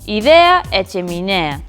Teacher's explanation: Idea e cheminea, que son con e aberto.